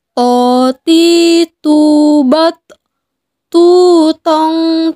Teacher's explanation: ketika melafalkan huruf tho dengan keadaan mati suaranya terdengar mantul